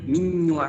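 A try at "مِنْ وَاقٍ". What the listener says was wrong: এখানে গুন্নাটা হবে মিন ওয়াক হবে না, কিন্তু গুন্নাটা কিন্তু ওয়াওয়ের জজমের উচ্চারণ করতে হবে, আর গুন্নাটা নাক দিয়ে হবে।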